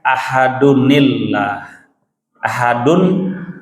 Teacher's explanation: tanwinnya harus dibaca, dipertahankan, bunyi an-nya jelas, dan kemudian nyambung ke hamzah wasl berikutnya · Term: nun wiqayah